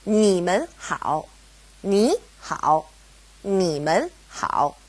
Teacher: It's a toneless tone, or a neutral tone, mun. Now, because we have mun separating ni and hao, they both go back to being third tone